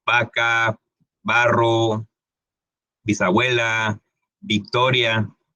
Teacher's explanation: en Latinoamérica, en México y los demás países que hablan español de este lado del planeta, no ocupamos esos sonidos, simplemente la V y la B tienen el mismo sonido.